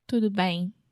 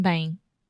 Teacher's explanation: your mouth is very relaxed and you're nasalizing the sound more. You're not completely finishing that final M sound.